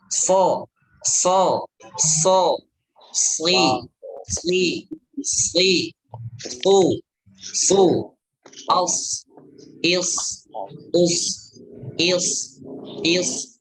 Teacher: Kalau so tebal, so tebal itu ya dengan ditandai dengan terangkatnya pangkal lidah